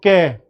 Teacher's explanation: तो जो कै वर्ग है ये कंठ से आ रहा है आपके, कंठ से कै वर्ग आता है।